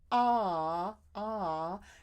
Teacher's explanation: - ah ah notice how far down my jaw is so with the AH for sure I feel my voice so my throat is vibrating and that's the most my jaw is going to drop